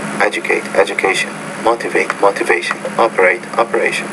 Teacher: he's not making the stress syllable clear louder longer and higher pitched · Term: word stress